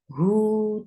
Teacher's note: For dhamma, circle your lips. Hu, 2 counts long.